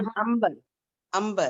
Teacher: انبر، ان نہیں پڑھیں گے، وہاں کیا ہے دیکھیے وہ امبر، الفاظ امبر، جی نون امبر، غنہ سے میم کی آواز نکلتی ہے